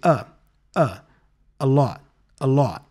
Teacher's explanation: the article a before lot also has the schwa sound here